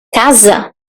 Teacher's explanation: Because we have an S between vowels. And in that case, in Portuguese, in European Portuguese, that's going to sound like a Z. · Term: Z sound